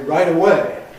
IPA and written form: ˈraɪt̬ əˈweɪ (right away)